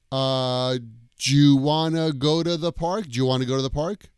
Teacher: And the do you gets squeezed together. Jew. Like do you want to go to the park?